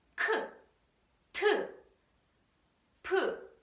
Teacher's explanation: the sound is produced with the sudden puffs with very strong puffs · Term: aspirated sound